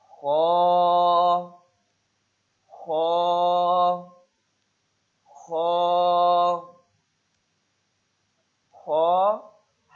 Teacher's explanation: حلق کے شروع سے جو منہ کی طرف ہے